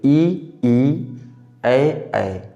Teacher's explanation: होंठ गोलाकार नहीं होते हैं, इसको अवर्तुल कहते हैं